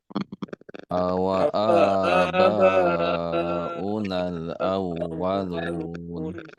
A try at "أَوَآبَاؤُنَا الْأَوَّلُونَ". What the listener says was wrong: Ya, sebagaimana huruf ya ditekan iya, begitu juga waw ya. Awwa, awwa.